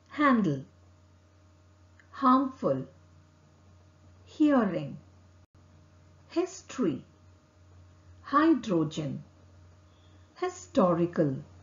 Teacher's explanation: to produce ha sound organs and the mouth do not move the air passes between the open vocal cords and out of the mouth vocal cord does not vibrate